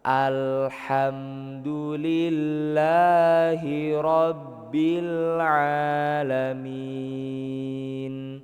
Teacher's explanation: huruf lam itu nggak boleh mantul Pak, karena bukan huruf qalqalah. Jadi sebisa mungkin jangan sampai memantul.